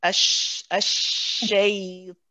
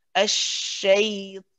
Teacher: See how my lips are not round at all.